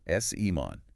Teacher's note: Think of it like salmon with the stress on that first syllable.